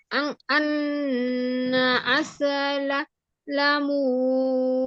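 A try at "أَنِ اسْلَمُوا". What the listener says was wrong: আন গুন্না হয়ে গেল যে আপু, গুন্না করা যাবে না তো। আন আসলামু।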